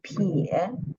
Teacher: The final is 耶, and the tone is the third tone.